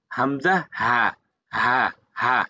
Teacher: এই হামজা হা বলছে হলকের শুরু হইতে উচ্চারিত হয় হামজা হা, মানে হলক মানে কণ্ঠনালী, হলক মানে কি ভাই?